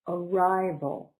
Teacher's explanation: Arrival. Three syllables. Stress is on the second one. Arrival. So up, ri, back down, vo.